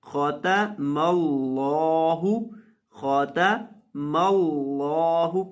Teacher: خو کو موٹا کریں گے، تا کو باریک کریں گے اور لفظ اللہ کے لام کو موٹا کریں گے۔